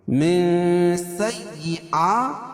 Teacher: میں اخفا حقیقی کیونکہ نون ساکن کے بعد حروف اخفا کے 15 حرفوں میں سے سین ہے تو یہاں ناک میں آواز کو چھپا کر پڑھیں گے